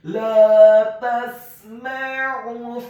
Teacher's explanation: Huruf sin-nya dibaca sukun, huruf mim-nya dibaca fathah 1 harokat. Dan huruf ain-nya ditekankan, keluar dari tenggorokan bagian tengah dhammah cukup 1 harokat saja